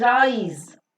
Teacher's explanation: Now this has got one vowel sound which is I, preceded by the r sound and followed by the z sound.